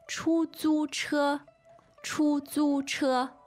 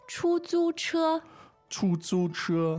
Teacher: They are 3 first tones.